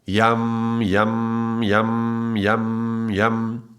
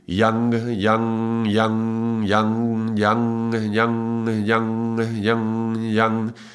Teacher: instead of the m at the end of every sound it's an ng so instead of yam yam yam it would be yang yang